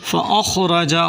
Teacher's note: خا کو موٹا کریں، را کو بھی موٹا کر کے پڑھیں